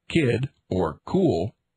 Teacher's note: the heavily aspirated sound c as in kid or cool